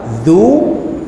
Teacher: zal yang perlu keluar sedikit hujung lidah